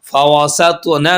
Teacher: تو پر قلقلہ ہو رہا ہے اور تو موٹا پڑا جائے گا